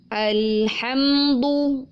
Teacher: Mim alhamdu. Di situ ada mim sukun, walaupun dia idhar syafawi, tapi dia tetap memiliki kadar dengung yang memang tidak terlalu banyak · ujung lidah menempel pada pangkal gigi seri atas, bukan pada langit-langit bagian tengah, karena nanti huruf dal menjadi bunyinya da.